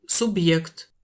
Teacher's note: le B est bien dur et le E est prononcé [je] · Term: signe dur